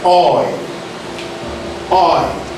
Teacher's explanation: Here, the tongue glides begins from the back towards the front, and the lips, which are rounded, gradually become spread as the tongue glide moves towards the E sound